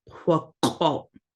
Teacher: And then you have the glottalized L, which acts just like a glottal stop in that it kind of just stops. It stops the sound.